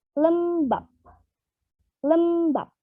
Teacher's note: jika B pada posisi koda, maka menjadi peh tak bersuara.